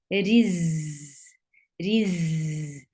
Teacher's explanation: Za will get sifa of safir. There should be a buzzing sound into it. And it has a rakhawa, so sound should flow very well.